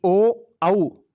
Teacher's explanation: ओ औ इन दोनों स्वरों का उच्चारण स्थान कंठोष्ठ होता है। ओ का औ का दोनों का उच्चारण स्थान पूछे तो कंठोष्ठ बताना है।